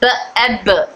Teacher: Explosive sound है। और यानी हवा इकट्ठा होकर फिर निकलती है। ब में पहले हवा अंदर मकरद में इकट्ठा हो जाती है। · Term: खलखला